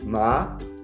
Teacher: el segundo tono es ascendente